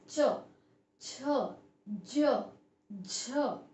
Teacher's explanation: जब हम इनको प्रोनाउंस करते हैं, च, छ, ज, झ, आप बोल के देखिए तो हमारी जीवा वो ऊपर वाले हिस्से को टच करती है। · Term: तालव्य व्यंजन